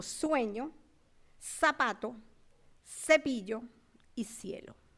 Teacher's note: no hay diferencias fonológicas entre el fonema fricativo alveolar sordo s, que corresponde a la letra S, y el interdental fricativo sordo z, de las consonantes Z y C, seguida de E o I en la pronunciación de palabras como sueño, zapato, cepillo y cielo. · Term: ceseo